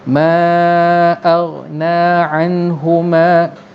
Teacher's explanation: Nun mati jumpa dengan ha, hukumnya ialah izhar halqi. Ini tak, maknanya tak ada dengung. Anhu terus je.